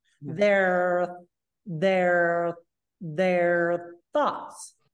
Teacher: we link and we connect, the whole point is that you have to hold the R there, and then that TH sound comes right on top of the R.